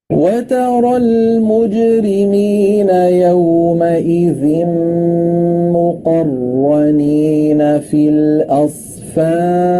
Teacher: यहाँ पे अगर आप देखें सबसे पहले हमने कायदा अभी हम रॉ को पुर पढ़ने में मुखफ़म की बात करें वतरल में रॉ पे ज़बर आ रहा है इसलिए इसको पुर पढ़ रहे हैं